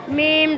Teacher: د دواړو شونډو وچه حصه چې په نرمۍ سره ولګي او بیا بنده پاتې شو نو هغې نه میم ادا کېږي نون د ژبې سر او